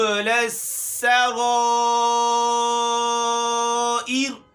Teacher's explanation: یہاں سین میں سیٹی کی آواز نکالنی ہے اور را ایر یہاں بھی را باریک ہے وقف کی صورت میں، کیونکہ را ساکن ہے، اس سے پہلے کسرہ آیا ہے زیر، اور اس کا زیر جو ہے یہ اصلی ہے، نہیں تو اگر یہ عارضی ہوتا تو را موٹی ہوتی۔